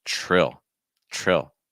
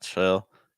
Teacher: when a t and an R link together it makes like a CH sound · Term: TR sound